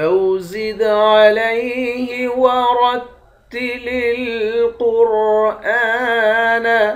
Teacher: دال پہ قلقلہ کریں گے، دال حروف قلقلہ میں سے ہے۔ را کو موٹا پڑھیں گے، قاف اور را ان دونوں حروف کو بھی موٹا پڑھیں گے، حمزے کے اوپر کھڑا زبر ہے، اس کو 1 الف کے مقدار کھینچ کر پڑھتے ہیں۔